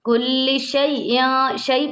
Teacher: یا ساکن سے پہلے زبر آ گیا یہاں پر یا لین ہو رہا ہے اس کو ہم شی اس طرح لمبا نہیں کریں گے